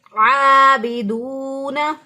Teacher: واو ساکن سے پہلے اگر پیش آ جائے تو اس کو واو مدہ کہتے ہیں، ایک الف کے برابر لمبا کریں گے